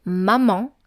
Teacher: with the nasal vowel en at the end